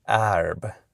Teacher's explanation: But he acknowledges that millions, he literally uses the word millions of people in America are saying something like arb, with a more open front vowel